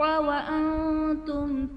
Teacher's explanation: وَأَنْتُم میں نون ساکن کے بعد حروف اخفا میں سے تا ہے تو یہاں پر اخفا کا قاعدہ ہوگا، یعنی نون ساکن میں ہم غنہ کر کے پڑھیں گے